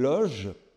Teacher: La partie consonantique dentale a disparu.